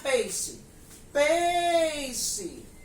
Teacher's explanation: demorei mais na sílaba PEI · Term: sílaba tônica